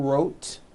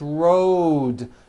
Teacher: It's not wrote, unvoiced, it's road. The whole word is voiced.